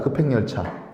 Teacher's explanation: 비읍하고 히읗이 합쳐져서 피읍이 됐어요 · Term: 거센 소리 내기